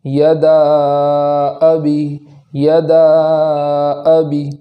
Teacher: اس کلمے کے آخر میں الف مدہ ہے، تو وہاں مد کریں گے اور اس مد کو تھوڑا کھینچ کر پڑھیں گے۔ جیسے عام طور پر ہم حروف مدہ آتا ہے تو ایک الف کے برابر کر کے پڑھتے ہیں، تو یہاں اس سے زیادہ مد کر کے پڑھیں گے۔